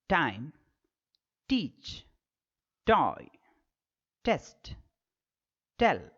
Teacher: Instead of the tongue going beneath this portion, it should touch the teeth ridge. the complete blockage or obstruction of the airstream and the sudden separation, the air rushing out.